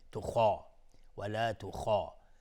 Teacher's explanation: خا غلیظ تلفظ میشه، الف هم تابع خا غلیظ تلفظ میشه